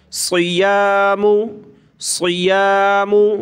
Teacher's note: صاد کو موٹا کریں گے، سین باریک پتلا پڑھتے ہیں لیکن صاد کو موٹا کرتے ہیں